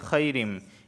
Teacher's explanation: یہاں تنوین کے بعد میم حروف یرملون کا آیا ہے تو یہاں پر ادغام بھی ہوگا غنہ بھی ہوگا